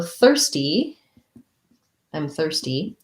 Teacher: you are ear there's many ways we can spell it but it's just an er a tight back american r